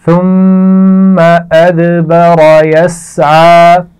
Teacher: اور را کو موٹا پڑا جائے گا. یسعى سین کی آواز میں سیٹی ہوتی ہے, اس کا خیال رکھیے اور عین کے مخرج کو واضح رکھنا ہے